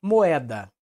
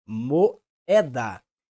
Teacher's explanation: tanto a vogal e como a vogal o são pronunciadas de forma mais intensa e elas ficam em sílabas diferentes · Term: hiato